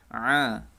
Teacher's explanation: dari tenggorokan bagian tengah seperti suara A tapi lebih ditekan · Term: huruf Ain